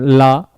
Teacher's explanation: पार्श्विक का मतलब ये होता है कि जीव के अगल बगल का भाग। जब भी हम ला को बोलते हैं तो हमारे जो है जीव के दोनों तरफ से हवा निकलती है